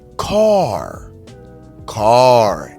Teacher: let's hear the r sound the sound of the r is rounded